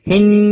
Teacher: نون مشدد پر گنہ ہوگا